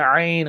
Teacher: আইন গলার ভিতরে চেপে পড়তে হবে, যেমন হা, আইন, এই দুটি হরফ গলা একটু চেপে পড়তে হয়, গলার মধ্যখানে উচ্চারিত হয়।